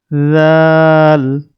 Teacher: জিহ্বার আগা দিয়ে পাতলা করে বলতে হবে।